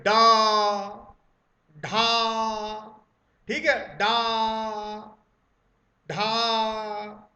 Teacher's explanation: ठीक है, और ध्यान रखिए, इनको बोलते समय एकदम झटके से जीभ ऊपर उठती है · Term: उच्छिप्त